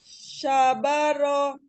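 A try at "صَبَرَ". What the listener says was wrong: Ya, sabaro. Nah, itu temponya sudah benar, hanya hurufnya aja sa ya, hurufnya sa, ujung lidahnya sama dikeluarkan tadi, makhrajnya huruf sa, zal dengan zo itu temanan ya, sama makhrajnya.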